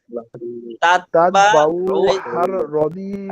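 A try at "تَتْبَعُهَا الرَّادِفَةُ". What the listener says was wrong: এই যে এখনো বললেন উহার, ওটা টান হলো, টান হবে না। দেখেন তাতবাউহার,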